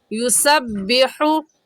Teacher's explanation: इस आयत में युसब्बिहु लिल्लाहि सीन सीटी वाले हरूफ में से है, यानी जब सीन को अदा करेंगे तो हल्की सी सीटी की आवाज़ आएगी। ऐसे युसब्बिहु हा हलक के दरमियानी हिस्से से निकल कर पढ़ती है, निकाल कर पढ़ेंगे।